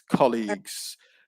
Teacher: colleagues stress on the first syllable it's colleagues yeah but aside from that your pronunciation was was